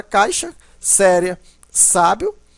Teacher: O ditongo também pode ser oral, né? O ar sai totalmente pela boca